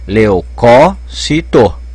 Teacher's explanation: Pode pôr acento, porque a tonicidade está caindo na terceira sílaba, de trás para frente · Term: proparoxítona